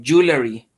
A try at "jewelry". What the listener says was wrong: Try to drop the E you are placing after the L. Just jewelry. Originally, you were saying like jewelry. Just drop that E. Drop it. Like LR.